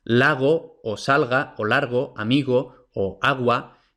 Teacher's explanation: el aire sale continuamente sin que se produzca turbulencia · En el alófono G no hay turbulencia. Entonces es pues simplemente G.